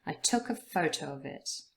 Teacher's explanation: took and photo are the main words that are stressed in the sentence. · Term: sentence stress